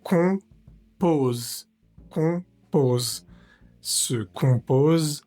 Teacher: Se pronuncia con la boca muy cerrada, como si fueras a mandar un beso y no pronunciamos esa m individual de la o. No vamos a decir com en español, sino la om va a ser un sonido único. Con con compos compos se compose, entonces la vocal es o m d'une pade brisé sur la avant la cuisson au four. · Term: vocal nasal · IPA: ɔ̃, [ɔ̃]